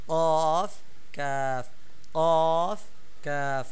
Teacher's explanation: আর কফ একটু ভিতরে, একদম গোড়া থেকে। কাফ একদম গোড়া থেকে না, একটু পর থেকে।